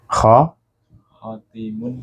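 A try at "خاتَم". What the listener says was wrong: Khotamun. Khotam bacanya. Kalau khotim, su'ul khotimah.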